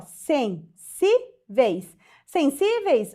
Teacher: proparoxítona sensíveis ó sensíveis sensíveis o que que acontece última penúltima penúltima sílaba mais forte terminada em ditongo paroxítona terminada em de tongo a mesma coisa de hotéis ó · Penúltima sílaba mais forte terminada em ditongo, paroxítona terminada em ditongo.